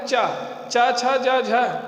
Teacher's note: फिर उसके बाद दूसरा क्रम है चा, चा छा जा झा, या और सा और ई, इनका उच्चारण स्थान है तालु। चा बोलिए, तालु का जिह्वा स्पर्श करती है, सांस को वहाँ रोकती है, सांस तालु से हो करके तब बाहर निकलती है, चा का उच्चारण करते हैं।